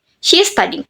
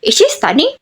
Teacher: The final intonation rise because syntactically it's an interrogative sentence. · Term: final intonation rises